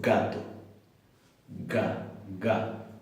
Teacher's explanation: En gato yo no puedo estirarla mucho, porque en un momento cierro completamente y digo gato, ga, ga. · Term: oclusiva